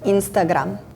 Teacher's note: just the Serbian R is a little bit more pronounced